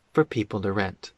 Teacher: The word to becomes de.